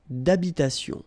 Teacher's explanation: H doesn't exist in French, well, in most of the cases, so it does mean that you don't pronounce it